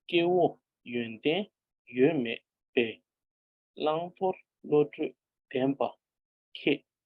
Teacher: 2 syllable together, 2 syllable together, and a single syllable. So 2, 2, 2, 1. This is the rhythm.